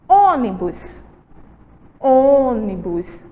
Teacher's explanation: Olha o som, como já é um som mais fechado.